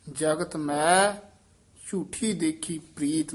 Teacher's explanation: ਮੈ ਉਚਾਰਨ ਕਰਨਾ ਨਾਸਕੀ ਉਚਾਰਨ ਮੈਂ ਨਹੀਂ ਕਰਨਾ ਹੈ